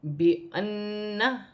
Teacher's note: بِأَنَّ غنہ کے ساتھ ادا ہوگا